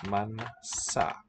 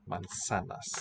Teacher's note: So we spell it with a Z, but it sounds like our S. Voiceless.